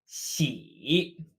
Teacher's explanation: So it sounds very similar to west, but with a dipping tone.